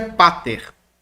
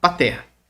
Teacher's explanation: Observe que o acento do vocativo é pater, na penúltima